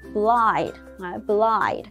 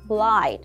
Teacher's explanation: chữ Y ở đây mình sẽ đọc nó thành âm I, tức là mình sẽ đọc nó thành một cái nguyên âm đôi ở trong tiếng Anh